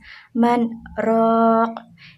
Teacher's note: Di sini ro-nya itu tafkhim dibaca tebal. Raq itu mad tabi'i jatuh sebelum huruf yang diwaqaf disebut bacaan mad arid li sukun.